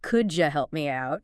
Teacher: Sometimes sounds blend together, like the D and Y and could you making a J sound.